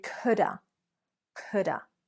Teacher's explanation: What happens to have? That's right, we reduce it to the schwa sound. Just like to, just like of, it becomes a weak sound.